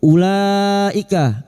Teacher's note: bertemunya mad dengan hamzah dalam satu kalimat mad wajib muttasil lima harakat. Kita panjangkan.